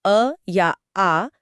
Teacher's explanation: जब हम बोलते हैं अ या आ तो ध्यान दीजिए कि आवाज सीधे गले की गहराई से निकलती है। मुंह का कोई और हिस्सा इसमें बिल्कुल रुकावट नहीं डालता। हम मतलब जीभ या दांत एकदम आराम कर रहे होते हैं। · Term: कंठ